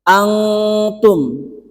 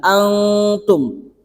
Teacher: Ikhfa hakiki itu samar ya. Jadi bacaannya itu seakan-akan ada eng-nya, ada ng-nya.